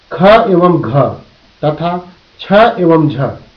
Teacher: वे ध्वनियां जिनके उच्चारण के समय मुंह से अधिक हवा निकलती है, महाप्राण व्यंजन कहलाते हैं।